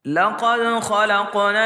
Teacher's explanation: دال کو ہم جھٹکے سے پڑھیں گے کیونکہ یہ حروف قلقلہ میں سے ہیں